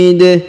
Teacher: huruf i dipanjangkan boleh dua boleh empat boleh enam harakat karena di depan huruf i terdapat ya sukun atau ya mati